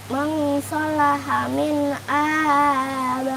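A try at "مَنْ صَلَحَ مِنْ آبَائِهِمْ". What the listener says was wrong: Agak dipanjangin Kak, mang 2 harokat ya, jangan mang doang. Jangan dibaca mang sholaha, agak dipanjangin lagi, dinikmatin ya. Mang sholaha min abaihim.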